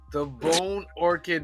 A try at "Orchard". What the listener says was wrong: Orchard not Orchid orchid's a flower Orchard is a place with tree